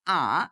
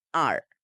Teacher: ব্রিটিশরা বলে আ তারা এখানে র এর উচ্চারণটা করে না আর আমেরিকানরা বলে আর আন ইউ [music] V V V double